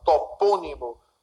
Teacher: antepenúltima sílaba é a mais forte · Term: proparoxítono